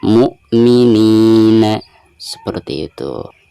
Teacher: Dan di sini ada kasroh nun lalu berhadapan dengan ya sukun, maka dihukumi mad tabi'i dan dibacanya 2 harokat